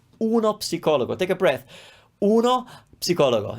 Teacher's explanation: in Italian it's psi, ps, p, we pronounce p and s, psicologo